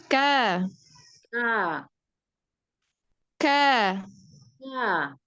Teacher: kafnya itu ee pangkal lidah yang bertemu di dengan langit-langit yang keras lalu dia punya sifat E syiddahidwi syiddah itu artinya kuat maka